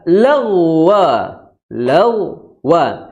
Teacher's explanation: huruf Gin dia makhrajnya adalah di apa di tenggorokan paling atas ya berarti di belakang lidah Kemudian yang kedua gain Dia memiliki apa pangk lidah yang naik